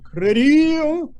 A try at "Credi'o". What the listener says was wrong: No, I'm hearing the D on the top. Keep it down the bottom.